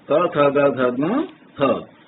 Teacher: ये वर्ण कंठ से बोले जाते हैं, इसलिए कंठे कहलाते हैं